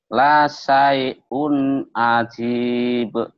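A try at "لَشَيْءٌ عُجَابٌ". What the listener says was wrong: Shinnya gede. Lasai lagi. Lasai, lasai, shin. Lasai'un ain ajib. Ajib.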